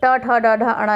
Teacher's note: ट ठ ड ढ अणा, ये वर्ग पूरा मूर्धा होता है, मूर्धन्य होता है